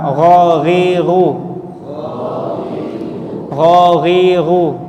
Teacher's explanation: akar lisan bertemu atau menyentuh langitlangit daging